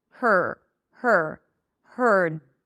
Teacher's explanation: the tip of the tongue ends the R by going up to touch the upper pallet.